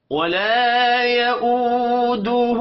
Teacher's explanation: ولا الف مدہ ہے، ایک الف کے برابر کھینچ کر پڑھیں گے.